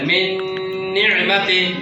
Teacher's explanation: নুনের পর নুন আসলে জিহ্বার আগে গুণনা হবে